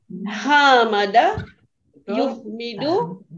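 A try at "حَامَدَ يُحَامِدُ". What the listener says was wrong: Hamidu ada alif. Hamada kan ada alif tambahannya. Hamid ada alif lagi. Hamid. Kalau ada alif lagi, Bu.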